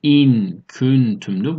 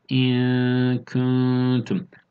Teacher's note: Dilin ön tarafının biraz arkasının üst damağa doğru yapışmasıyla, ama ihfa olunan nun ise buradan değil, hayşum bölgesinden çıkmakta